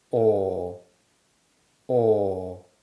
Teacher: the sound is generally produced with a tongue higher in modern pronunciation obviously in real conversation we don't produce the o sound first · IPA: /ɔ:/